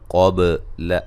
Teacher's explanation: قاف کو موٹا، با پہ قلقلہ